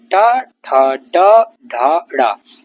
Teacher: ट वर्ग के वर्ण मूर्धन्य हैं। जीभ की नोक तालू से टकराती है इनको बोलते हुए। कठोर ध्वनि होती है इनकी।